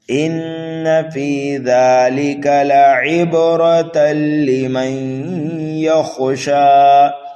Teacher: نون مشدد ہے، غنہ کرنا ہے، فا کے بعد یا مدہ ہے، ایک الف کے برابر فا کو کھینچنا ہے، زال کو بھی کھینچنا ہے، لام اور کاف کو جلدی پڑھنا ہے۔